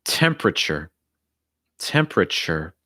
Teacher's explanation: that second e will not be pronounced